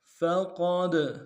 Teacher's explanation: قوف کو موٹا ادا کر دو، دال کے ساتھ ملانا ہے، دال حروف قلقلہ میں سے قلقلہ کریں گے